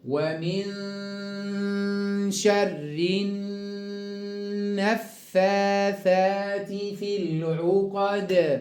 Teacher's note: النفاثات لام شمسية، والنون مشددة غنى أكمل ما يكون، غنى بمقدار حركتين. والدال عند الوقف حرف مقلقل.